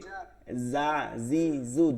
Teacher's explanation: জিব্বার মধ্যখান তালুতে এটা জিমের মাখরাজ